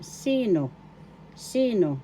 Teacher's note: the accent is in the first syllable